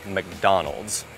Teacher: Phần đầu nó rất ngắn, Mc. Trọng âm nằm tại âm tiết thứ hai, Don. Và các bạn hãy nhớ kết thúc bằng U, D, Z.